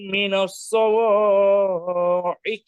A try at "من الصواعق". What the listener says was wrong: মিনাস সাওয়া, এটা মোটা হবে না, আর মাদ এত বেশি, দুই আলিফ হবে না, এক আলিফ। মিনাস সাওয়াইকি, সাওয়াইকি।